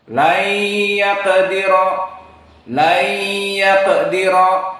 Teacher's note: Maka di sini perbedaan idgham bi gunnah dan bi ghairi gunnah. Idgham bi gunnah dia panjang dua harokat dan makhrajnya dari khaysum.